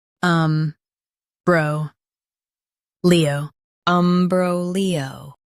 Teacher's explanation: Stress bro and keep Leo smooth.